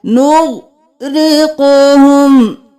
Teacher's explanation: غائن اور قاف کو موٹا پڑھنا ہے، غائن کو ہلانا نہیں ہے، قاف کو ہلانا ہے۔